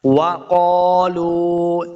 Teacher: وَقَالُوا، واو زبر وا، دونوں ہونٹ گول کریں گے تب واو کا صحیح مخرج ادا ہوگا۔ وَقَالُوا، اس قاف کو موٹا پڑھنا ہے، قاف کے آگے الف ہے، اس کو 2 حرکات لمع بھی کریں گے۔ وَقَالُوا، لام پیش، واو لو، واو مد ہے، اس کو 2 حرکات ہم نے لمع کرنا ہے۔